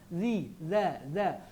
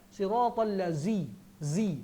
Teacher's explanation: Lidah keluar sikit ke depan macam posisi gigi atas dan gigi bawah menggigit lidah kita. Za. Siratal ladzi, nampak saya gigit. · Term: huruf zal